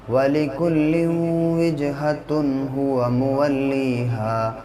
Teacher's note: تنوین کے بعد یہاں پہ آگے ہا آیا ہے، اور ہا حروف حلقی کے 6 حرفوں میں سے ہے، اس لیے یہاں پر اب غنہ نہیں بلکہ اظہار ہوگا